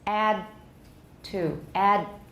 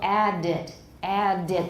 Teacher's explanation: We're already turning off the voicing to get ready for T.